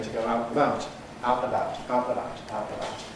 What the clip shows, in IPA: tə ˈgəʊ ˈaʊt nəˈbaʊt